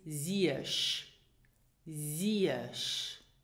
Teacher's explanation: And these are pronounced y. So you slide from the E to the y